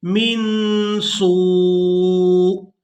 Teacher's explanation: اب یہاں پر وقف کریں گے تو وقف کی صورت میں حمزہ کو ساکن کر دیں گے، سین کو واو مدہ کی وجہ سے کھینچتے ہوئے اس حمزہ ساکن کے ساتھ ملائیں گے۔